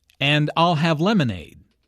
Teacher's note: Notice how stresses I'll and lemonade to emphasize her choice